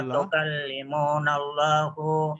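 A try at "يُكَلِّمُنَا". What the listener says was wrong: Yukallimu, bukan tak, bukan tukallimu, tapi yu pakai ya, yukallimuna.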